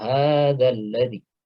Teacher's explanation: Nah, di sini meskipun dza di sini adalah mad tabi'i, namun karena di sini ada hamzah wasal, ya, sehingga dia langsung masuk ke huruf berikutnya, ya. Jadi dza-nya di sini tidak dibaca panjang, langsung hadzal ladzi